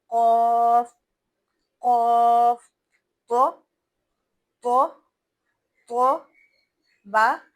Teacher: इसका मतलब यह है कि पढ़ते वक्त हमारी आवाज बंद हो जाएगी। बहती नहीं रहेगी। यानी फू की आवाज बिल्कुल भी नहीं आएगी और आवाज एक झटके से पढ़ने के बाद बंद हो जाएगी। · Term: सिफत शिद्दत